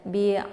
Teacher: karena H ini hurufnya adalah tenggorokan bagian bawah jadi hurufnya itu dibaca jelas